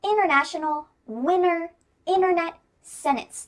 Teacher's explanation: see if you can hear my throat stopping the T in the middle of the word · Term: glottal T